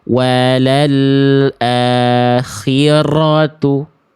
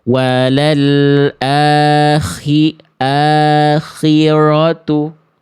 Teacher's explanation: Jangan sampai huruf ro getarannya dibaca berlebihan macam ini. Wal akhiratu ataupun dia hilang banget, hilang sama sekali getarannya atau samar.